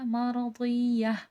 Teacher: مرضیہ، یہاں پر بھی دیکھیں تا ہے، تا کے وقف ہا میں بدل جاتی ہے، ہائے مدورہ کہلاتا ہے۔